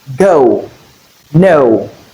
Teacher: the tongue you make movement from the middle to the high back. That's why this is known as glide because this the tongue will glide from where you have the sound to where you have the sound.